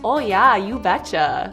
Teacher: if you're from North Dakota, you've got some long O's.